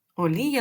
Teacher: а після голосної букви в нас також я поділяється на два звуки